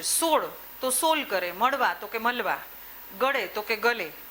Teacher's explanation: અળનો લત કરી નાખે છે